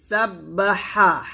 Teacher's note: سبح হাজবর হা, এখানে হাটা গলার মাঝখান থেকে চিকন করে চাপ দিয়ে বলতে হবে